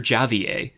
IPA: d͡ʒɑː.viː.eɪ̯